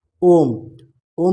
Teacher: ओम का उच्चारण करेंगे आप बहुत अधिक समय लगता है उच्चारण करने में दीर्घ स्वर से अधिक समय लगता है